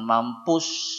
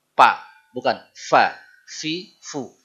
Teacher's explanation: Huruf af ya, orang Sunda kesulitan. Dia suka ditukar dengan ap.